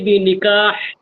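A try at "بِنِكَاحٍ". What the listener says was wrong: বেনিকাহ না শেষে সাকিন করেন কেন এখানে সাকিন হইব কেন বেনিকাহিন তানবিন হবে কেন সাকিন কি আছে সাকিন পড়ার কোনো অপশন নাই এখানে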